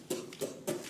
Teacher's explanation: an unvoiced labial plosive because I'm not putting any sound through it. I put no melody through it.